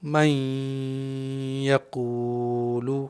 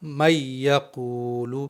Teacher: تو ہم یہاں پر نون اور یا کا ادغام کریں گے یعنی ان دونوں کو ملا کر کے پڑھیں گے، لیکن غنہ بھی کریں گے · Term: ادغام با غنہ